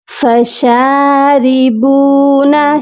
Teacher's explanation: را کے نیچے زیر ہے اسی لیے را کو باریک پڑھا جائے گا